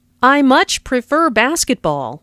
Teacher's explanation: notice how much is stressed to show that the speaker really likes basketball